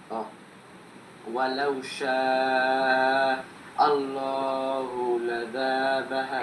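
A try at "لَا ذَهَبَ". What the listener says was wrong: এই যে লাজা টান হয়ে যাচ্ছে, লাযাহাবা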